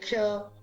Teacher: इन क और श दोनों के मिलने से ये क्ष बना है और इसलिए ये संयुक्त व्यंजन है। इसका उच्चारण भी क और श दोनों मिलके होता है